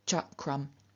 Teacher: is a velar velars are reduplicated as their palatal equivalents and k is the unvoiced unaspirated velar which is reduplicated as the unvoiced unaspirated palatal · reduplicated as the unvoiced, unaspirated palatal, which is ch. And so we get cha krum.